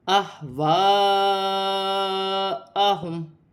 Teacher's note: ہا ساکن ہے، سینے والی ہا ہے، حمزہ کے ساتھ ملا کر پڑھا جائے گا